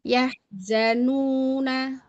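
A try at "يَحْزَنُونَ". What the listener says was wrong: Ini hilang hurufnya. Di ujung-ujung mendekati za dia hilang bunyi hamasnya tuh. Yahzanuna.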